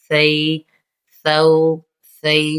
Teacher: سیٹی کی آواز نہیں آئے گی